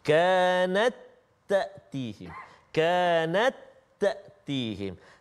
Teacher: Ta yang pertama tak berbaris, ta yang kedua berbaris. Jadi masukkan bunyi ta itu jadi satu-satu ta aja. Jangan baca kanat tak ada bunyi ta, tak ada. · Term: hukum idgham